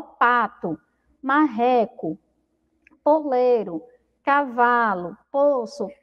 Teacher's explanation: São todas palavras do poema, mas quando a gente pronuncia, ó, pato, marreco, poleiro, cavalo, poço, todas têm aí o som de U no final